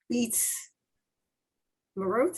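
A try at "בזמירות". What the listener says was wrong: Now, almost, but remember when we have the Z sound, it must sound like a Z. Biz, me, wrote.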